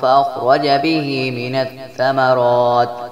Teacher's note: را پر زبر ہے جس لیے را کو بھی موٹا پڑھیں گے